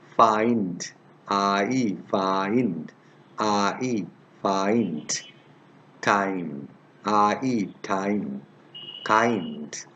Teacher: Now, let's go to the next one, I-E, I-E. This diphthong begins with an open vowel like E.